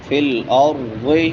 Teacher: را موٹی ہوگی کیونکہ اس سے پہلے زبر ہے، اور ضاد بھی موٹے حروف میں سے ہے، اس کو بھی موٹا کر کے پڑھیں گے۔